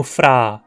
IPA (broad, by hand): fraː